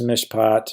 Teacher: accented close long and pre tonic closed short